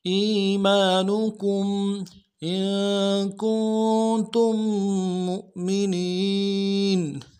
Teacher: کم میں کاف میم ساکن ہے، یہاں پہ اظہار ہوگا